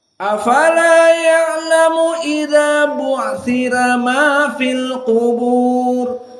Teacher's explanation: Maka dibaca dengan tarqiq ra.